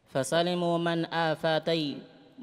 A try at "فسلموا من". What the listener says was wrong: man di sini bukan man, min. Fasalimu min